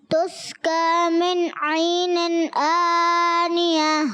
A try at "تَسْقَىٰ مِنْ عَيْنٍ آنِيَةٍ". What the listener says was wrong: تسقا کاف موٹا رکھیں پھر دوبارہ پڑھیں.